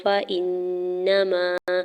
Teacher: امران فانما، فا کی زبر کو بغیر کھینچے ہوئے ادا کرنا ہے، حمزہ کی زیر کو نون مشدد کے ساتھ ملاتے ہوئے غنہ کرنا ہے اور نون کے زبر کو بغیر کھینچے ہوئے ادا کرنا ہے۔